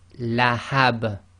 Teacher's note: the ba, which is carrying the kasratain, becomes sakin and it effectively becomes an echo letter